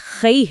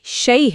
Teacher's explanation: آواز کو لمبا نہیں کرنا بلکہ زبر کی آ آواز سے یہ کی طرف پھسلنا ہے۔ یہ ایک سفر ہے۔ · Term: حروف لین